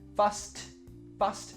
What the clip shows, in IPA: fʌst